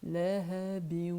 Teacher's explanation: Et je fais rebondir le ba. · J'enchaîne le tanwin avec le waouh. J'arrondis mes lèvres. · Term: lettres rebondissantes